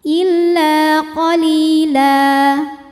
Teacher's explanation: sebab ada baris tanwin fathah yang kita berhentikan atau kita wakafkan cara bacanya baris duanya jadi satu jadi fathah dan dipanjangkan dua harakat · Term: Mad iwad